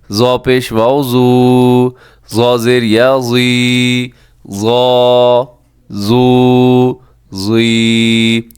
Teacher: زا کے اندر بھی سی ٹی پائی جاتی ہے، اس میں بھی سی ٹی ہے